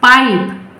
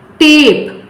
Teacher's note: the sound of this first vowel will change from short vowel to long vowel